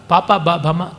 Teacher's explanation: ಪಾಪ ಬಾ ಭಮ ತೂಟಿಗಳು ಸೇರಿ ಆಗುವಂಥದ್ದು.